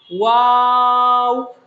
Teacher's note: 2 ঠোঁট গোল করে আমরা উচ্চারণ করব